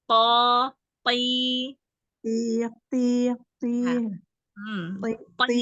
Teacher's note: walaupun kasrah pangkal lidahnya tetap terangkat